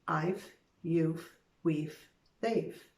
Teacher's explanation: when trying to say the VE contractions, you can use a F sound. It will help you say the contraction faster.